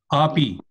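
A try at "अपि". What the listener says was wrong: Not api. Api. This is a short vowel a. Api, not api.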